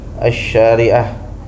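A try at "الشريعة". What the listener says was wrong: Asy-syari'ah, mahu syari'ah. Syanya kurang panjang. Syanya kurang panjang. Enggak, 6 harokat. Sini 6 harokat.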